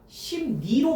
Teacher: 심리는 리을이 앞에 음은 미음의 영향으로 콧소리 비음인 니은으로 바뀌었죠. 심리가 심니로 바뀌어 있잖아. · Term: 비음화